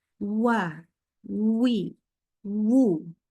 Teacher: fathahnya muncul ini pangkal lidahnya turun jadi awalannya itulah yang monyong awalannya monyong awalannya juga yang pangkal lidahnya naik tapi setelah itu langsung diturunkan